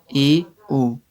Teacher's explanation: हैं समृत पढ़ा हमने समृत जिसमें ना के बराबर मुंह खुले अर्ध समृत होता है मुंह थोड़ा सा खुलता है